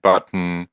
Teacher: in English, when you say button, the n is basically the vowel, right? Button.